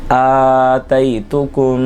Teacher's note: یہاں پہ بھی میم ساکن کے بعد دوسری میم آ رہی ہے، ادغام شفوی ہو رہا ہے۔